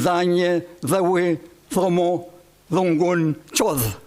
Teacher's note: D, fricativo ápico dental, que rara vez es un poco oclusivo